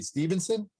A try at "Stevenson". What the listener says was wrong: Stevenson. It's not Steven. It's Steve's son. No end. There's no end. There's no end, right?